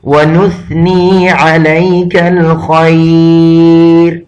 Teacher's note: وَنَتَوَكَّلُ عَلَيْكَ وَنُثْنِي عَلَيْكَ الْخَيْرِ، یہاں چونکہ سا آیا ہے، اور ہمیشہ جو پڑھتے ہیں وہ یہاں کثرت سے غلطی کرتے ہیں، یہ چونکہ سا ہے اور سا میں بالکل سیٹی کا آواز نہیں نکلتا